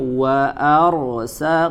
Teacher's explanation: ro sukun ya, sebelumnya berharokat fathah dibaca tebal